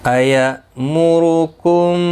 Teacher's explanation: حمزہ ساکن کو جھٹکی کے ساتھ ادا کیا جائے گا۔ میم را پیش کی وجہ سے پر پڑھا جائے گا۔